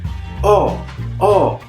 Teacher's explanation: È una vocale posteriore semiaperta arrotondata, ossia la lingua si trova all'indietro, relativamente in basso e vado ad arrotondare le labbra.